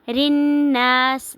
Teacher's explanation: ناس پہ غنہ ہو رہا ہے، نون غنہ ہو رہا ہے اور ساتھ میں الف مدہ ہو رہا ہے